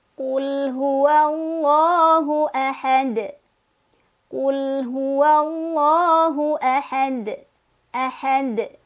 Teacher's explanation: Karena kita berhenti di huruf dal, karena kita waqaf, maka dalnya disukunkan kan? Maka pantulannya akan terdengar lebih jelas ya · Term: qalqalah kubra